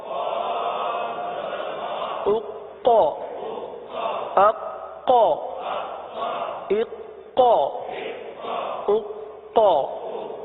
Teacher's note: اب ہے قاف، حرف قلقلہ کا، یہاں پر جماؤ بھی ہوگا قلقلہ بھی ہوگا